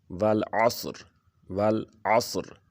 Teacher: والعصر، والعصر، عین اور صاد کو جو اب آواز نکالنی ہے تو عین کی آواز الف کی طرح نہ نکلے اور صاد کی سین کی طرح نہ نکلے، بلکہ عین کے الف سے علیحدہ آواز ہے اور صاد کی سین سے، تو یہ فرق آپ کو محسوس ہونا چاہیے۔ عین کی گلے سے آواز آنی ہے، صاد کی تھوڑی سی پر کر کے، تاکہ صاد اور سین میں فرق محسوس ہو۔